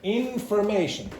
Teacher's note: the secondary stress is on the first syllable here and the primary stress is on the third syllable